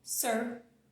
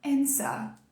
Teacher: Enrolando esse R, se você fala o sotaque inglês americano, né? Porque no inglês americano a gente enrola, no britânico não. No britânico ficaria assim, ó, answer.